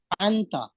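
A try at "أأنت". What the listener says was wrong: अंता से पहले आ भी कहें, आ अंता।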